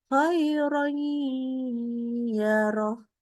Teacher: Satu lagi ada khairon ketemu ya roh sama tanwinnya bunyi n, bunyi nun sukun itu langsung berubah menjadi huruf ya. Khairoy dengan dikasih gunnah.